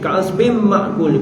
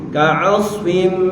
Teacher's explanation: Hukumnya adalah idgham ma'al gunnah. Kena dengung dua harakat